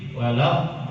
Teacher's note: kita lanjut ke panjang 6 harokat, yaitu bertemu dengan tasydid